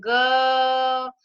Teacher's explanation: ग की जो ध्वनि है वो सीधे हमारे कंठ से निकल रही है, तो इसका उत्तर हो जाएगा कंठ।